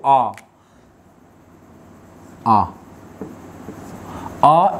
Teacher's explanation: एकमात्र स्वर आ ही ऐसा है जिसका उच्चारण करने पर हमारा मुख पूरा खुल जाता है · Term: विवृत